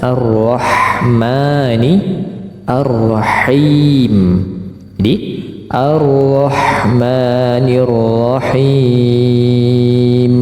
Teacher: Kemudian Ar-Rahmanir Rahim, sama ya dengan Ar-Rahmanir Rahim di ayat Basmalah tadi, di surah ayat yang pertama tadi. Ro-nya tebal, ha-nya terdengar jelas.